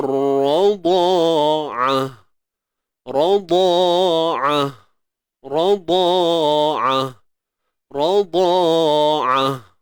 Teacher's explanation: Pada ain tu tak ada huruf mat kan, so tak perlu panjang lah. · Ain ni sempitkan tengah kerongkong, matikan ta ni dengan bunyi ha. Ta yang tertutup bila kita matikan bunyinya huruf ha. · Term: huruf ain